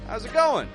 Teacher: We're peaking it up on the going.